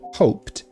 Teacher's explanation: Se você olhar no alfabeto fonético também, você vai ter aqui no final, quando conjugado no passado, o desenho de um T. Ou seja, o som desse D na escrita se torna som de T na fala